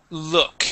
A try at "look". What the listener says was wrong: Okay, almost. You said luck. Okay, it is look.